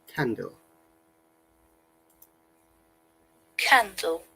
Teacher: Noticeable in the word candle, though there is no O sound, there is a schwa sound at the end.